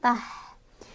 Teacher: hanya keluar angin halus kayak nggak ada kotoran.